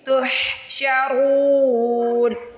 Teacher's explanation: ہا کی آواز حلق سے نکالیں گے، تحشرون۔ را کو موٹا بھی پڑھیں گے، را کو کھینچ کے بھی ادا کریں گے۔